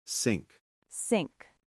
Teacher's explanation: Now for sink, like the kitchen sink, it's just a regular sound. Tongue behind your teeth, air through, no vibration.